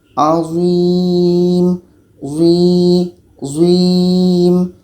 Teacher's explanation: Kita merasakan suara kita tebal dan lidah kita terangkat menempel dengan langit-langit mulut.